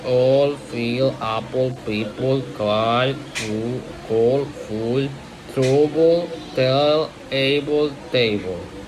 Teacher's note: When L is the last sound of the word, the back of the tongue is raised higher than for L at the beginning or middle of the word.